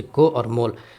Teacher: اور واو مجہول جو کھینچ کر کے نہیں پڑھی جاتی ہے، جیسے کو اور مول۔